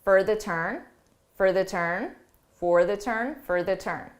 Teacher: for becomes an unstressed, reduced sound